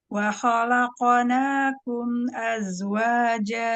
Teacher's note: Karena qafnya huruf tebal. Jadi qalqalahnya tebal juga.